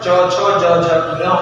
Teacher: तालव्य मतलब तालु से बोले जाने वाले वर्ण तालव्य के अंतर्गत आते हैं। और तालव्य से जो वर्ण बोले जाते हैं उसमें तालु और जीभ का संयुक्त स्पर्श होता है, तभी ये वर्ण बनते हैं।